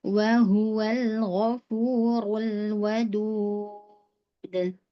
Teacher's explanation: Gha tebal, fu tipis.